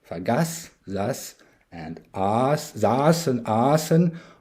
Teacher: The Germanic voiceless dental plosive t is shifted to the dental double fricative s as part of the Tenuisverschiebung. We will come back to this later in more detail, whereby the latter is simplified to s after a long vowel or diphthong or when in final position.